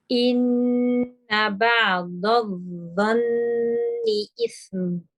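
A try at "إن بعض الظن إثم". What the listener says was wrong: Right, mashallah, that was a really, really good attempt. Your ain good, the ba nice, the dad good as well.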